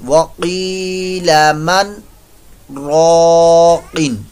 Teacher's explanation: सक्ता ज्यादा देर नहीं रुकना, दो हरकात के बराबर ये तकरीबन बनेगा